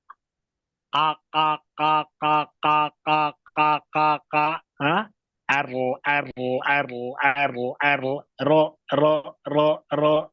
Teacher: pada praktiknya ujungnya dulu nempel baru pangkalnya menyusul sekali lagi ujungnya dulu nempel pangkalnya menyusul maka latihannya begini ya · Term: huruf ro